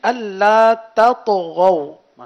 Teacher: تو تا کو باریک ادا کیا جائے گا اور طا کو پر پڑھا جائے گا